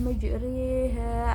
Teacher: Bacaan imalah, bukan majroha tetapi majriha, antara alif ke kasrah.